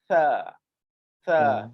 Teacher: Dan nombor 9 tadi dah bagi tahu dah, gunakan ayat simple, bicara makhraj huruf tu Ustaz kena tengok lah. Huruf ta, hujung lidah bertemu hujung gigi depan atas. Okey, cuba letak hujung lidah dan lidah tu kena landing keluar sikit.